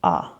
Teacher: this is the shortest sound in the English language and is also known as The Lazy sound because you're going to pronounce a by hardly opening your mouth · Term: schw sound